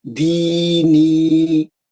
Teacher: दो हरकत दी में, दो हरकत नी में, दीनी, दो मध्य असली है इसके अंदर।